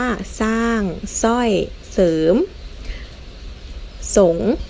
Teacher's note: เราจะไม่อ่านออกเสียงเรือเลยนะคะอ่านออกเสียงแค่ตัวหน้านะคะ แต่เวลาสะกดเราสะกดด้วยนะอย่างเช่นคำว่าสร้างแล้วสะกดศ.รออางอถางออกเสียงสางเลย